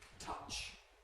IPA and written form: tʌʧ (touch)